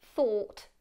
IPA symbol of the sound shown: θɔ: t